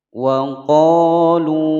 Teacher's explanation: Wa pendek, ko dibaca panjang dua ketukan sebab ada mad tabi'i, ada alif sebelumnya fathah atau fathah diiringi dengan alif, dibaca panjang dua ketukan. Wa qalu, lu dibaca panjang dua ketukan sebab ada wawu sukun sebelumnya dhammah